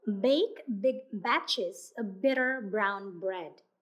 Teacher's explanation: The B sound is voiced. Feel the vibration in your throat as you pronounce the B sound.